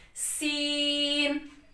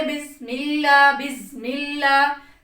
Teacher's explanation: اس میں جتنا ہو سکتا ہے سیٹی کی ساؤنڈ نکالنی ہے، ٹھیک ہے؟ اگر ہم پڑھیں بسم اللہ، بسم اللہ، سیٹی کی آواز نہیں آ رہی تو یہ ہمارا مخرج غلط ہو جائے گا، کیونکہ یہ اس کی صفت ہے کہ اس میں سے سیٹی کی آواز کو نکال کر پڑھا جائے۔